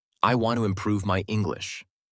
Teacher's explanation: The strong words are want, improve, and English. The other words are softer. This makes the sentence sound smooth and natural.